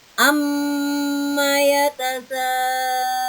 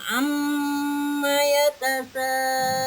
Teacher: Jadi dengungnya di hidung. Geterannya tuh di hidung. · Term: gunnahnya